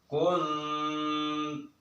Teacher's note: cara bacanya itu ikhfa, yang artinya samar, dalam arti agak ditahan dulu